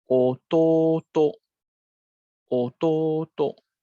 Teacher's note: It will drop after the last mora or the last hiragana character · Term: odaka gata